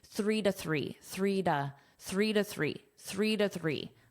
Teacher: Notice you almost don't hear that dash being verbalized, but it's there as a very unstressed two.